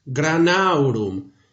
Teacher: At the end of the word, the M is weak, almost a nasalization.